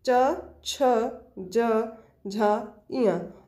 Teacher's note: तालव्य व्यंजन, जिसमें तालु जो मुख के भीतर के छत का पिछला भाग छुएगा